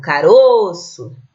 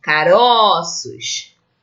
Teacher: esse o faz parte da sílaba tônica e ele é fechado